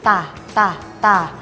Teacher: ให้ใช้ปลายลิ้นแตะบริเวณฐานฟันบนแล้วเปล่งเสียงตาตาตา